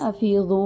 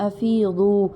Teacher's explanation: کیونکہ واو مدہ ہے، ایک الف جتنا ٹائم دیں گے